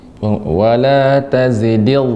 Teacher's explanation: dengan punggung ujung lidah dengan gigi seri atas